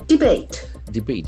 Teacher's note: The accent falls on the second syllable.